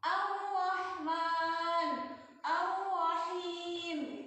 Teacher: Jadi bacanya bukan al-Rahman, lamnya lebur. Ar-Rahman langsung ke ro ya.